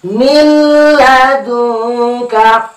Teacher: Hukumnya tidak berdengung atau baca jelas mil.